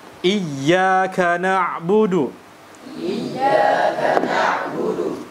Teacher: Maka di sini kita berikan haknya, dan diantaranya adalah huruf ain adalah huruf tawassut, sehingga ketika kita matikan mengalir suara sedikit.